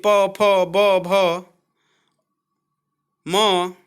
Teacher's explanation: प वर्ग के सभी यानी प फ ब भ म का उच्चारण स्थान ओट होता है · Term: ओष्ठ